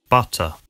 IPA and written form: ˈBʌ.tə (mantequilla)